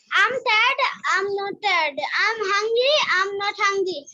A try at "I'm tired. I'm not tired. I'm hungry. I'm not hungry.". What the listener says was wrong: Excellent.